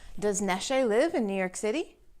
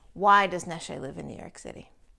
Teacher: Yes, no questions with the intonation that goes up. Does Neshe live in New York City? And an open-ended question where the intonation goes down.